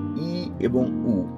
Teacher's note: বাংলা সংবৃত স্বরধ্বনি দুইটি ই এবং উ